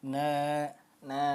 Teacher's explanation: fathah bertemu Alif maka dia menjadi Mad thi'i atau mad asli dibaca panjang dua ketukan na na nah jadi tidak pendek nasu astatan liyur tanya Mad